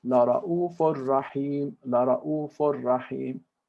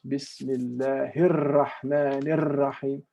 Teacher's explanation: Arabic doesn't drag the r like that. Only one time. You have shadda, you say La Ra'ufur Rahim, La Ra'ufur Rahim, or Bismillahir Rahmanir Rahim, not Bismillahir Rahmanir Rahim.